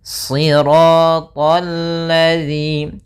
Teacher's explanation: ada alif lam syamsiyah, langsung ke huruf lam, alif dan lam tertulis tapi dia tidak dibaca karena yang dibaca adalah lam yang ketiga.